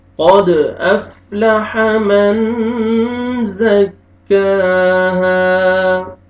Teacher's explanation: قد دال قلقلہ double sound آئے گا، قاف کو موٹا کر کے پڑھیں گے۔ قد افلح حا پڑھیں گے، افلح من، نون ساکن کے بعد زار ہے، حروف اخفاء میں سے آپ اخفاء کریں گے۔